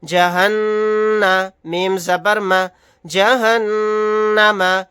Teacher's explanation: یہاں پر نون کے اوپر تشدید ہے تو یہاں پر غنہ کر کے پڑھیں گے